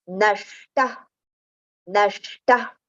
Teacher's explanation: visarga sound should be heard like fa. So for that we just have to exhale